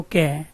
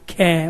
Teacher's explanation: ये वाला हाथ का जो हिस्सा है, इसको यहाँ मुख के आगे लगाओ और उच्चारण करो। कै वायु कम आई, खे वायु ज्यादा आई, गै वायु कम आई, घै वायु ज्यादा आई